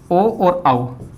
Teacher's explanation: ओ और औ इन दोनों वर्णों का उच्चारण स्थान कंठोष्ठ होता है।